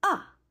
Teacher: The fourth tone is a falling tone, like a painful sound.